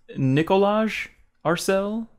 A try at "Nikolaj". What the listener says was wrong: That might just be Nikolai. Sometimes the J is silent.